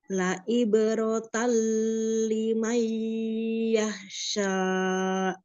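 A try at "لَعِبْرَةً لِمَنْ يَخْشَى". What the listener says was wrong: Dihilangin nabar-nabarnya dihilangin. Jangan tal limai. Nah itu dihilangin ya. Sejajarin. Ibaratan limai yakhsha. Satu itu kan bila gunnah, satunya bila gunnah. Dibedakan ya. La ibaratan limai yakhsha.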